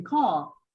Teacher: Or if you say, for example, car in American English, in British English, you don't say car, you say car. So the R is not pronounced basically